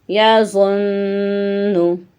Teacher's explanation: آواز ہماری اینڈ پہ ناک میں سے آ رہی ہے جو کہ غنّے کی ہے